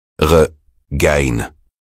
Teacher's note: C'est un son qui ressemble un peu à notre français mais plus gutural comme si on se gargarisait légèrement